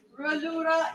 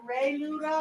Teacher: a little French on the ra, like a little schwa sound.